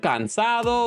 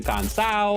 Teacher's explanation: And the last one is common to a lot more regions than just Puerto Rico, which is the dropping of the D sound, mostly between vowels